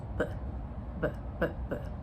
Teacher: So we know if we we touch here and you feel a vibration that's voiced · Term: voiced billeial sound